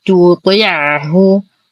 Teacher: تلاقى التاء المرققة مع الطاء المفخمة توطي نفس المخرج لكن سبحان الله الأول مرقق والثاني مفخم